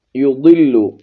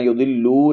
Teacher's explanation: اور یا کو اور لام کو ان کے اوپر پیش ہے، آپ نے زیادہ لمبا نہیں کرنا، یضلو نہیں پڑھنا